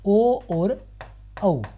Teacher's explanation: इन्हें कंठोष्ठी कहते हैं क्योंकि इनका उच्चारण कंठ और ओष्ठ दोनों से होता है।